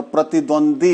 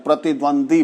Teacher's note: तो प्रतिद्वंद्वी को अगर हम बोलते हैं तो प्रतिद्वंदी बोल जाते हैं। लास्ट का द्वी जो है वह उसको हम खा जाते हैं